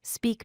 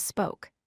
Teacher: Notice how the vowel sound changes from long E to long O.